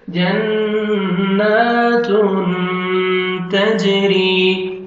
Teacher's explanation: کھڑا زبر ہے جنات. تنوین کے بعد حروف اخفاء میں سے تا ہے، نوز میں ساؤنڈ لے کے جائیں گے · تا کو باریک پڑھنا ہے، تاکہ تھا میں ساؤنڈ مکس نہ ہو